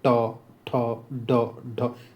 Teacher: जीभ जो है तालु को टच कर रही है, तो इसे मूर्धन्य बोलते हैं।